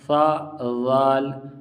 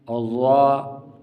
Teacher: سا ذال باریک اور ذا موٹا ہوگا